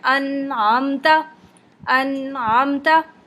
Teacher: नून पे बहुत देर स्टे नहीं करना बस नून को अच्छा सा पढ़ते हुए आइन पे जाना है और बहुत स्मूथली जाना है